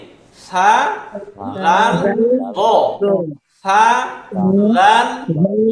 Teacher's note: জিহবার যে আগাটা এটাকে উপরের দাঁতের আগার সাথে লাগাবো